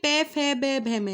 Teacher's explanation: उसके बाद देखिए पे फे बे भे में, ये लास्ट वाला क्या होता है, आपका ओष्ठ होता है। आप पे बोल के देखिए आपके जो है होठ, दोनों होठ मिलेंगे आपस में